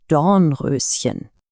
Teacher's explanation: Der Klang kommt von vorne, aber die Lippen bleiben rund. Ö. Probieren Sie es mal.